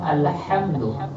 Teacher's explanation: এখানে আমরা হাম মিমেও গুণনা করব না, সুদা সিম্পল পড়বো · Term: মিমকে স্পষ্ট করে